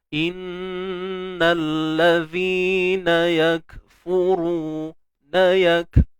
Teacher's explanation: Tetapi untuk memastikan supaya tidak berlaku kebocoran pada bunyi ini, pastikan kita tahan dulu suara, ataupun erti kata lainnya, bahasa lainnya, kita selesaikan dulu sifat syiddahnya, suara yang tertahan, yak, kemudian baru kita lepaskan udara. Sikit sahaja. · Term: sifat hams